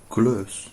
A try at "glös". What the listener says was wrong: glös. Exactly.